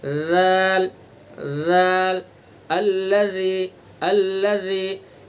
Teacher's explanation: सिर्फ ज़बान की नोक को सना उलिया के किनारे पर लगाएंगे, बाकी ज़बान के हर हिस्से को बचा कर रखेंगे, कहीं भी टच नहीं होने पाए। अगर ज़बान का कुछ भी हिस्सा इधर उधर टच हुआ तो दाल का सही तलफ़्फ़ुज़ नहीं होगा।